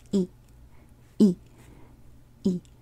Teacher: So a creaky sound is short and cuts off at the end.